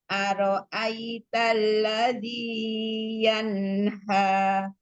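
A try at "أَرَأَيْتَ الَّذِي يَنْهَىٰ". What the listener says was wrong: Panjangan Z-nya 2 harokat aja.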